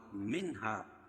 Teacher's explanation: منہا نون ساکن کے بعد حروف حلقی کے 6 حرفوں میں سے ہا ہے، اس میں اظہار حلقی ہوگا، اس کو ظاہر کر کے پڑھیں گے بلا غنہ کے